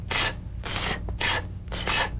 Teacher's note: Feel a crisp, percussive hiss between the tip of the tongue and the teeth.